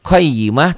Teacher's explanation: tak marbutoh karena dihentikan bunyinya jadi ha